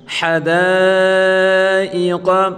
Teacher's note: حروف مدہ کے بعد اگر حمزہ آ جائے تو وہاں چار الفی مد ہوگی، یہاں چار الف کی مقدار کھینچ کر پڑھیں گے۔